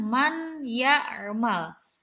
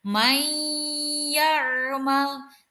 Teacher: seakan-akan huruf nun nya hilang